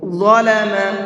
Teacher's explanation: ظا کو بھی منہ بھر کے پڑھیں گے